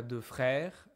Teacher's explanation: I never change the pronunciation. I never hear this s.